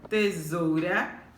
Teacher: A palavra tesoura, tesoura, qual é a sílaba mais forte? Isso mesmo, zou.